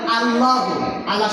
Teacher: আল্লাহ শব্দের লামের আগে জবর, এটাকে পুর বা মোটা করিয়া করতে হয়।